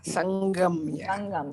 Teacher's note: The anuswara is taking on the sound of the g